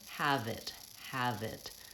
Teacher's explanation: So for example, rather than have it or half it, that might be my error pattern, I'm going to run those two words together and link them. The V is almost jumping onto the I of it. So rather than have it, it sounds like have it, have it.